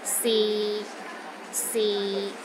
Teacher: Lastly, the sixth tone is low and steady, but not as low as the fourth tone.